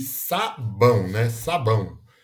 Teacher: Sabão temos aqui então um ditongo, né? Porque a gente tem a vogal A junto com a semivogal O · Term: ditongo decrescente